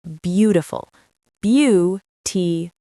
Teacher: The first part is long and loud. The rest is short.